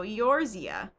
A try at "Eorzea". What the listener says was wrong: I think you're supposed to pronounce the E like an A.